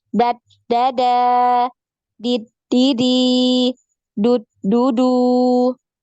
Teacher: ya ad langsung ad Da jadi jangan dialirkan lagi suaranya ya karena ini enggak punya aliran suara dia huruf Dal ini ya suaranya tertahan